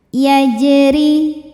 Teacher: Kemudian ada qalqalah sugra karena huruf qalqalahnya sukun asli di ada dan ada di tengah bacaan ya. Maka kita baca dengan pantulan yang kecil. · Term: qalqalah sughra